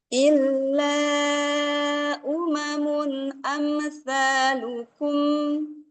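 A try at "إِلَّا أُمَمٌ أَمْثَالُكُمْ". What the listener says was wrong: Bu, tambahin sedikit tawasud pada mim. Nah, ini soalnya udah bagus. Illa umamun amsalukum.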